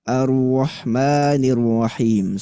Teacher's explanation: samarkan bacaan ro takrir ketika dia tasydid